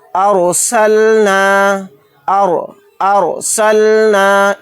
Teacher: دیکھیے یہاں پر را کے اوپر جزم ہے تو اس کو را ساکنہ بولیں گے۔ رائے ساکنہ سے پہلے زبر ہے تو اس را کو موٹا یعنی پر پڑھیں گے · را کو موٹا یعنی پر پڑھنا ہے۔ دیکھیے یہاں پر را کے اوپر جزم ہے تو اس کو را ساکنہ بولیں گے۔